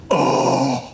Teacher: Breathy voice, long, low back, unrounded vowel with advanced tongue root.